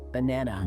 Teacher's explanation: You might think you should say banana, but we don't. We put all the power on the middle part